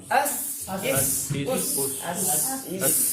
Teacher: सीन की आवाज कैसे आ रही है, सीटी वाली और बारीक है